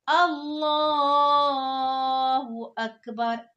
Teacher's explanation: लफ्ज अल्लाह के नाम को पुर करके पढ़ना है, मोटा करके पढ़ना है